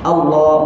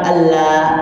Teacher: Dan Allah di situ lam dia lam tafkhim. Tafkhim ini tebal.